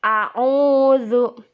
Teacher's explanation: Di ayat pertama, Qul a'udzu birabbin nas, yang bergaris warna orange itu hukumnya mad tabi'i. Jadi kalau domah bertemu wawu itu harus dipanjangkan 2 harokat atau diayun